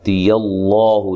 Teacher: لفظ اللہ کے لام کو موٹا پڑھنا ہے، اس سے پہلے حرف پر زبر ہے